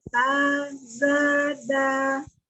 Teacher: Ujung lidahnya berada di ujung gigi seri bagian atas ya.